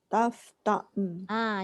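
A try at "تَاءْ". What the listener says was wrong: Jangan bunyi ain Taf ta. Ta. Okey. Jangan tekan ain Macam kita sebut tak, tak, tak. Macam itulah Hamzah.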